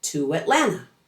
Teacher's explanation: To Atlanta as in I'm going to Atlanta becomes to Atlanta. Exaggerate and elongate the W in the oo vowel to blend it into the following a sound.